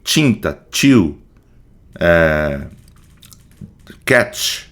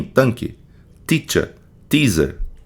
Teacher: Assim como no D, esse contato produz um som seco, tá? Então, o som alvéolo palatal vai ser um som mais molhado, né? Tinta, chill, catch. E o som alveolar vai ser um som mais seco.